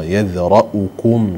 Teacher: عندنا الراء مفخمة مفتوحة بعدها همزة مضمومة